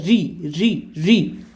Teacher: तो जो मुंह के जो भीतर की जो छत है ना, जो मुंह की भीतर छत होती है, उसका अगला भाग से अपन बोलते हैं री, री, री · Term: मूर्धा